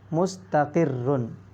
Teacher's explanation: رائے مشددہ سے پہلے زیر ہے، اس لیے اس را کو کیا پڑھیں گے؟ باریک پڑھیں گے